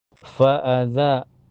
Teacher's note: za ada mad tabi'i dhahiri karena ada alif sebelumnya harokat fathah, di za dibaca panjang dua harokat